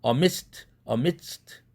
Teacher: 그렇다 할지라도 드 사운드가 아니라 트 사운드로 비개방음을 해라. 그 이유는 뒤에 나와 있는 스가 무성음이니까 앞에 드에 영향을 미쳐서 amidst 이렇게 하라 이거죠